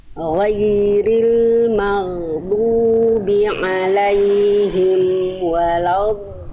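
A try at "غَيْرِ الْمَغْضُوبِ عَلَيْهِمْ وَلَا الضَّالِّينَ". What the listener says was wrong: Bagus Bunda, ini sebenarnya sudah dalam kadar aman. Cuman saya yakin Bunda huruf dotnya bisa lebih tebal dari itu. Nah, jadi huruf dot itu termasuk huruf yang memang kalau kita ibaratkan itu super duper tebal gitu.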